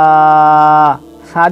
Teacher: সা যে উচ্চারণ হবে, দুটো দাঁতের মধ্যখান থেকে জিভটা হালকা বেরোবে, বেরিয়ে হালকা করে উচ্চারণ হবে।